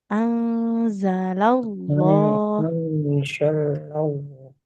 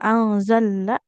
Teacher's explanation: di anzalallah lamnya nggak ditasdid